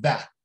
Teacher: nunca vou pronunciar that com um Azinho mais fechado. Não, este A é bem aberto.